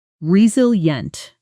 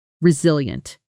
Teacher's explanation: The pronunciation re-sil-ient The stress is clearly on the second syllable.